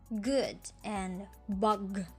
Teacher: sounds in these groups are made with the tongue near the velum. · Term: velar consonants